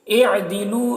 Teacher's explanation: लू में वाव मद्दा है, इसे एक अलिफ के बराबर खींचेंगे।